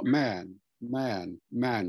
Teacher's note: today it's more man man man with an ah sound